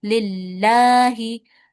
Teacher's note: Kemudian huruf lam ini dia nyatu sama lafaz Allah. Nah, maka lafaz Allahnya dibaca tipis. Lillahi. Ya, seperti huruf lam biasa.